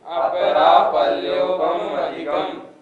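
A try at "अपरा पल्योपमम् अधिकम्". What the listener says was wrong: लोग कैसे बोलते हैं अपरापल्योपम अधिकम, न ऐसे नहीं। पमम अधिकम, माँ हलंत नहीं है। कैसे बोलना पड़ेगा अपरापल्योपम अधिकम, तब इसमें संधि विच्छेद होगा पल्योपमम अधिकम। इसलिए इसका उच्चारण ध्यान रखें। इसके उच्चारण में मैं बहुत अशुद्धि देखता हूँ।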